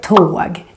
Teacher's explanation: here you can hear the long version of the O because the O is followed by just one consonant, the G